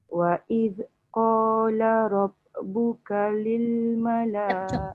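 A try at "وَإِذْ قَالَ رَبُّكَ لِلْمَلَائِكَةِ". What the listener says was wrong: Zal tu cuba jangan bunyikan dia punya the tu. Wa idh qala. Dekat Rabbuka tu, ba tu memang dia ada qalqalah.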